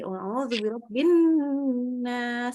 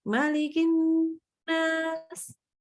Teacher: Tapi setiap nun tasydid dia akan sempurnakan minimalnya 3 harokat.